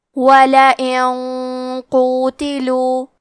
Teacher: کلمت قوتلو میں حرف القاف کی ادائیگی زبان کے جڑ اور تالوں کے نرم حصے سے ہے. قاف حروف تفخیم میں سے ہے تو ہم یہ حرف کو موٹی آواز میں پڑھیں گے. · کیونکہ غنہ میں اگلے والے حرف کا حکم لیتے ہیں تفخیم میں اور ترقیق میں اور حرف القاف حروف التفخیم میں سے ہے تو ہم یہ غنہ کو بھی بھاری آواز میں ادا کریں گے